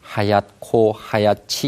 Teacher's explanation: 뒤에 나오는 자음이 이제 거센소리로 바뀌니까 히읗 발음이 있다는 것이 분명하거든요